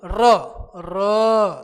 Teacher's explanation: कंपन करते हुए मुंह से निकलेगा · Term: प्रक पित व्यंजन